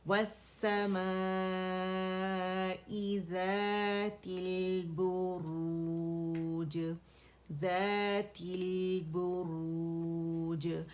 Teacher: لام پہ ٹکنا نہیں ہے, جسٹ توسط شو کرنا ہے, 1 کاؤنٹ کے لیے اس پہ جانا ہے